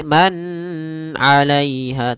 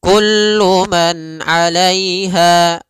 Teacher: fan pada lafal Kullu Man di sini ada izhar halqi yaitu suara nunnya dibaca dengan jelas ketika bertemu dengan huruf Ain